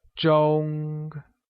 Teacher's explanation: clock translates to Jeong which is pronounced using a high level tone